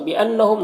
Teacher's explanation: نون مشدد غنہ ہوگا، میم میں اظہار شفوی ہو رہا ہے